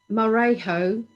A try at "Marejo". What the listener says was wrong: You got to roll the R. Come on, roll the R.